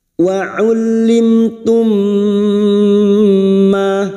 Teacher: zhar syafawi mim sukun dibaca jelasum berikutnya mim sukun bertemu Mim Bertemunya dua mim namanya bacaan Idam Mimi masuk pada huruf mim berikutnya disertai mendengung selama tiga harakat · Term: idgam Mimi, idgham mimi